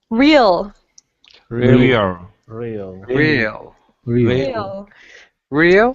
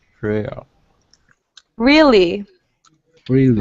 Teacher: Your tongue is starting further back in your mouth and moving forward.